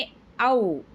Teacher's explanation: ఆ, ఉ అనే రెండు స్వరాల అవ్యవధానంగా పలకటం వల్ల ఏర్పడే కంఠ్యోశ్చం